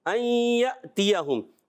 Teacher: یا کو حمزہ سے ملائیں گے، یا جھٹکا سے ادا کریں گے. یہ حمزہ ہے، یہ الف نہیں ہے.